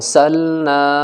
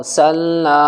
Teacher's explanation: اور سلنا، ار نہیں بولنا اسے، اور سلنا، کیونکہ را ساکن ہے اور را ساکن سے پہلے والے حرف کے اوپر زبر ہے تو را یہاں پر موٹی ہو کر کے پڑھی جائے گی